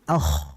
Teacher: Ak kan ngalir dia suaranya ngalir kemudian tebal. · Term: ko